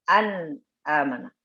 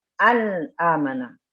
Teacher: Tetap ada gunnahnya. Tapi nakis sedikit. Pendek durasinya.